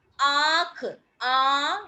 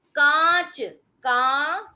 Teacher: गले से भी आवाज आएगी, मुंह से भी, यानी चंद्र बिंदु वाले जो शब्द होते हैं उसमें आवाज नाक से भी आती है और मुख से भी। ठीक है, तो उसमें कोई शब्द मान लो मैंने लिया आंख, आ, यानी मैंने गले से भी जोर लगाया आ, और उसके बाद नाक से भी आवाज आ रही है। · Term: अनुनासिक